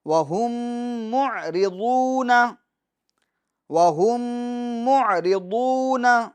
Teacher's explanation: عین کو واضح کریں گے، ایسا نہ ہو کہ حمزہ والی آواز نکلے، یعنی نہیں، عین کی آواز نکلنی چاہیے.